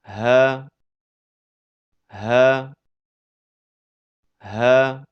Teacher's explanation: Huruf ha keluar dari pangkal tenggorokan.